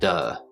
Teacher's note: We start with the D sound and then go into the schwa sound, the lazy short U as I call it